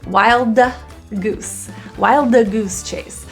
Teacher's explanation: this D is not fully released because when we have two hard consonants or stops right next to each other, we tend to just transition from one to the other without releasing.